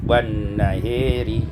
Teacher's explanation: imalatu fathatil ha wal alif, dibaca imalah fathah ha dan alif